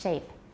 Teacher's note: Don't say shape, it's shape. Yeah, in Taiwan you learn too much rounding for the sh consonants, sh and ch and j. It's sh, shape.